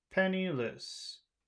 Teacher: it goes from high to low